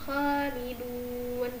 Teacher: Di sini ada kho yang dibaca panjang dan di depannya bukan huruf berharokat tasydid ataupun sukun ataupun juga huruf hamzah.